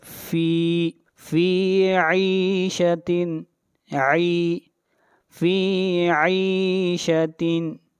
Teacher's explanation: عین کو کھینچ کر پڑھیں گے 1 الف کے برابر، یا مدہ ہے